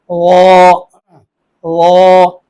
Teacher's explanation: یہ مستعلیہ بھی ہے اور مطبقہ بھی ہے، تو اس لیے یہ زیادہ پر ہوتا ہے